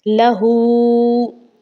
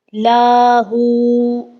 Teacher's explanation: हमने हा को खींच के पढ़ना है, हा उल्टा पेश है